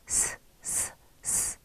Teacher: 자음 기본자, 시옷, 스 소리는 이의 모양을 본떠서 만들었습니다. 스 소리를 내보면 바람이 이를 스치면서 소리가 나는 것을 느낄 수 있습니다.